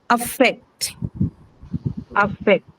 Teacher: affect can be a verb, and hence it's going to be stressed on second syllable. Second syllable also because affect has the first sound in affect is what is the shwa.